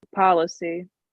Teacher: the strength is on the first syllable · The stress is on the first syllable, pa. The last syllable, because it ends in a vowel sound, e, tends to be a little longer.